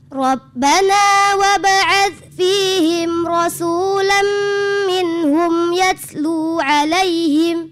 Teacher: sinnya itu lebih anginnya lebih kencang lagi ya